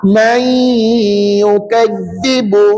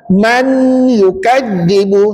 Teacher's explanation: Maka sat lagi nun mati tu masukkan dalam bacaannya kepada huruf ya. Maka bacaannya may bunyi sengau. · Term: idgham